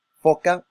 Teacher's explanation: hacemos uso de lo que son los dientes superiores y el labio inferior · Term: sonidos labiodentales